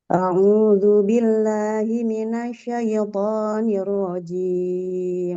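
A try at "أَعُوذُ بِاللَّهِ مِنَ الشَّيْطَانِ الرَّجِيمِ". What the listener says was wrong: Sya-nya coba tasdidnya di perbaiki minasya.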